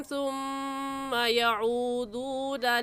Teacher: सुम्मा में मीम मुशद्दद है, गुन्ना करेंगे